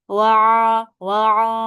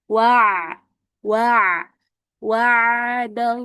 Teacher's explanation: Dia enggak dengung, enggak masuk ke hidung, enggak bindang suaranya.